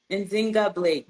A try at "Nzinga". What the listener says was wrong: Zynga, that's Zynga. The N is silent. Zynga.